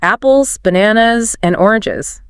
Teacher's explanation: you tend to go up on each item until the last one.